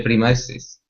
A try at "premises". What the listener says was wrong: I want you to give me a good R sound. So right now you're saying premises. Okay. Control your tongue so it doesn't